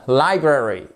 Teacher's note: Attention, accentuation sur la première syllabe.